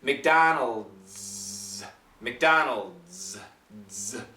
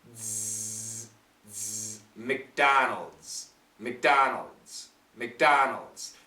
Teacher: the very tip comes down so we get some air and the Z sound. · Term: vibrated Z